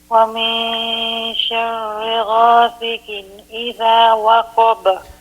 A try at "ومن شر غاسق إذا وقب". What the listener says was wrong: ومن شر غاسق. If the qaf, you can pronounce it more clearly, please.